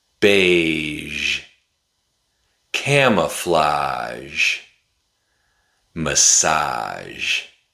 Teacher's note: Is very similar to the /ʃ/ sound we make when we want someone to be quiet, but we just turn on our voice. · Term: zh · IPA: /ʒ/, ʒ